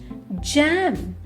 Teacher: Move your tongue towards the back of your mouth with the tip touching behind your upper teeth. Then push air out while making a slight buzzing sound with your vocal cords. Now say J. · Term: J sound